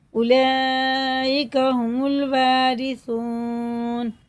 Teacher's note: سا باریک ہوتا ہے، کھینچ کے پڑھیں گے واو کو اور سا کو